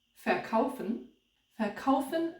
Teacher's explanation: notice that fair is not stressed usually